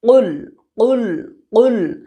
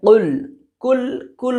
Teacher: ज़बान का आखिरी हिस्सा को ऊपर सटा के बोलने का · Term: बड़ी काफ